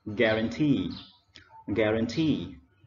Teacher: the first word, we stress on the third syllable and we pronounce guarantee.